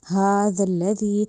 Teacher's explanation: زا کی ساؤنڈ نہیں دینی، ذال کو ذال رکھنا ہے، نرمی سے ہی ادا کرنا ہے · ہا میں جو ہا ہے وہ حلق والا نہیں ہے، ہا جو ہے وہ سینے والی سائڈ سے ادا کرنا ہے، حلق سے ادا نہیں کرنا۔